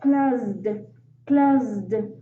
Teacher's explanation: In this case, the S sound like a vibrating Z. So the word will sound like closed, closed, opened, lived, lived.